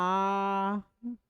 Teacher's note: विवृत हमारा ऐसा स्वर वर्ण जिनके उच्चारण में हमारा मुंह लगभग पूरा खुल जाता है